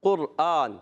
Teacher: موٹا قاف جو اس کا مخرج ہے زبان کی جڑ اور تعلق کا نرم حصہ